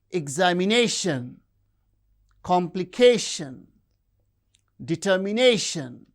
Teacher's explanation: have stress on the penultimate syllable